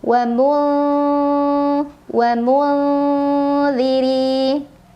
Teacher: ra dibaca secara tarqiq karena ra berbaris kasrah, jadi bacanya tipis. Mulzirin, rin apabila berhenti di sana hukumnya mad arid li sukun karena ada mad tabi'i bertemu dengan huruf yang disukunkan karena waqaf.